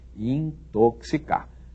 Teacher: Esse X deve ser lido como se houvesse aí um C e um S, não é? Ou no alfabeto fonético um K e um S, para quem prefere essa linguagem, não é?